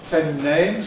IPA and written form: ˌten ˈneɪmz (ten names)